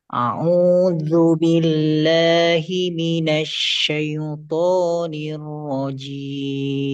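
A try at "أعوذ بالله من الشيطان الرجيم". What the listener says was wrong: syaitonnya tidak boleh dikata syai, itu tidak boleh imalah. Imalah itu hurufnya e. A'udzu billahi minasy syai. Nah, itu jangan syai, ya, tapi fathahnya jelas. Syai. Syaitonir rajim.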